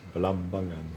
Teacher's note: Because you have to put the stress. I find that you put the stress on the second syllable.